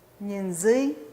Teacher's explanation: Entonces el acento cae en la segunda sílaba